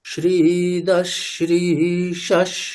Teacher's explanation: বিসর্গ চেঞ্জ কি করেছি এখানে আমরা, পরে যে তিনটে সকার, তালব্য স, মূর্ধন্য স আর দন্ত্য স, এই তিনটি সকারের মধ্যে যে সকারটি বিসর্গের পরে আসবে, আমি বিসর্গটাকে সন্ধি করব, সন্ধি করে কি করব, বিসর্গটাকে পরবর্তী যে সকার সেই সকারেই চেঞ্জ করব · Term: বিসর্গ সন্ধির